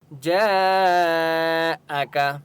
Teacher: جیم کے اوپر بڑی مد ہے اس لیے 4 سے 5 الف کی مقدار کھینچ کر پڑھیں گے